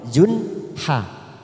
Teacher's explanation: Zun tanwin dumat tanwin bertemu ha, namanya bacaan idhar halki, kita baca jelas tanpa mendengung.